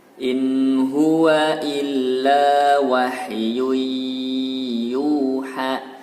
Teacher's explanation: Wahyu idgham dibaca dengung dan tahan panjang 2 harokat. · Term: Idgham bi gunnah